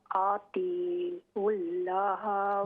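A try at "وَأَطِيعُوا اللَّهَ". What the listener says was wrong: लाम को मोटा करें। व अतीउल्लाह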